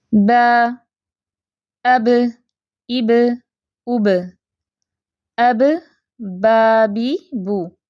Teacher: لیکن آپ زبان کی کیفیت دیکھ رہی ہیں، زبان جڑ سے اٹھی ہوئی نہیں ہے، نیچے ہے، ٹھیک ہے، زبان پیچھے سے اٹھنی نہیں چاہیے، کیونکہ با جو ہے وہ باریک لیٹر ہے تو آواز بھی باریک ہوگی